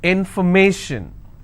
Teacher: So where do I stress? I will stress on may.